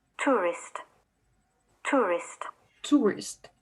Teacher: The words like Europe, rural, and tourist are practically never heard with a central diphthong, not even from conservative-sounding newsreaders. The vowel here tends to be realized as a monophthong that may be interpreted as a variant of oo. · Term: Goose merger